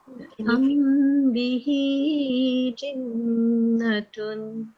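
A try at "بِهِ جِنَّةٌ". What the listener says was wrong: Yes, good. Noon was much better. This is still a little bit too short.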